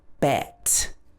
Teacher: a little bit further down it bit bit better bet so your tongue is roughly in the middle of your mouth at the front